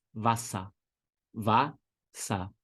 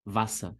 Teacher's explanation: Olha o final, som de A. Termina com ER, mas você faz som de A.